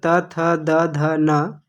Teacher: त वर्ग त थ द ध न, इसका उच्चारण स्थान दांत है